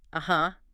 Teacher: But if you say it with a rising pitch, uh-huh, that's a question. It means really, are you sure?